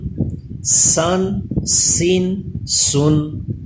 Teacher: اس پہ زبان دانتوں سے پیچھے رہے گی زا کی طرح